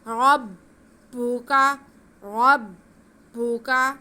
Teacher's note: را کو با کے ساتھ ملائیں گے تھوڑا رک کے تاکہ شد ادا ہو سکے، اور با پہ پیش یا پھر کاف پہ زبر ہے، کھینچنا کسی کو بھی نہیں ہے۔